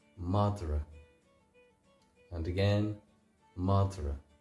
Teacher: there's what's called an epenthetic vowel in there where m a d or a between the D and the